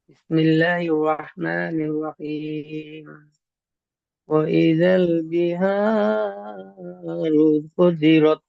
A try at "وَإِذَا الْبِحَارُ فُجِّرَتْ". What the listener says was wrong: এখানে খুব সুন্দর পড়েছেন আপনি, একটু ভুল হয়েছে, এই যে তাসদিদ, তাসদিদ আলা অক্ষরকে দুবার পড়তে হবে, আপনার একবার হয়েছে। ফুজিরত পড়েছেন, ফা জিম পেশ ফুজ, ফুজ,